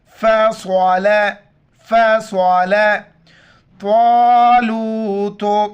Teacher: صاد موٹے الفاظ میں سے موٹا کر کے پڑھیں گے اور تو بھی موٹے الفاظ میں سے